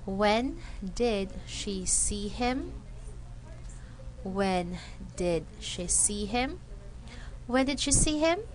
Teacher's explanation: notice that from the word when up to the last word him the intonation went up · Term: rising intonation